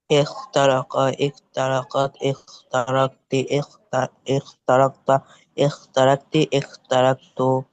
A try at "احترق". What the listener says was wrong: হ্যাঁ, ইখ না কিন্তু, খ না, কিন্তু ওটা হচ্ছে হা। খ আবার মনে করো না, ঠিক আছে? ইহ তারক, ইহ তারক, বুঝে এসছে?